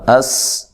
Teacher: اس حمزہ کو تحقیق سے پڑھنا ہے، سین پہ باریک سیٹی، سین کو ہلانا نہیں ہے